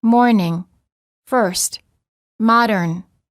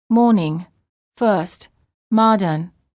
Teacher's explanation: The R before a consonant is also always pronounced in American English, but generally not pronounced in British English. Americans say morning, first, modern.